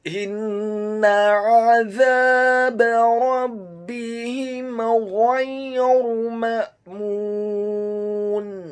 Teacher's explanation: Huruf alif atau hamzanya dibaca tipis, sukun. Kemudian huruf mim yang kedua dibaca dhammah 2 harokat karena setelahnya ada huruf wawu sukun, dan di akhir ayat huruf nunnya dibaca sukun.